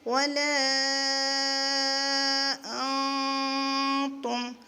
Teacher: لام الف مد زبر لا، ولا، حمزہ نون زبر ان، ولا جب ہم ملا کر پڑھیں گے تو نون کی آواز کو چھپائیں گے، اخفا کریں گے